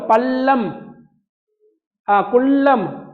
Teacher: நாவின் நுனி அண்ணத்தின் நடு